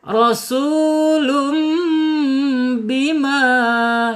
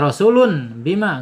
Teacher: Jadi mingkem bibirnya, mim jadi asyafatain gitu ya. Masuk ke al-khaisum gitu. Rasulum bima ya, bacanya iqlab ya, bacanya iqlab ditahan 2 harokat.